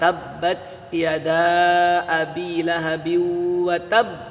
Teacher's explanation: Kalau di situ ada tabbat yada, yang satunya ada desis, yang satunya tidak ada. Kalau ta itu tidak ada desis